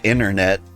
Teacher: I said internet, but like I didn't pronounce the T in inter